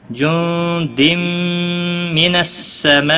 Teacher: ما بڑی مد ہے، 5 الف کے برابر کھینچ کر پڑھیں گے، مد متصل